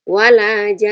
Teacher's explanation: Panjang 6 dulu, baru kemudian gunnahkan nunnya 2 harokat.